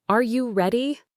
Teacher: The pitch of your voice rises at the end. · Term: rising intonation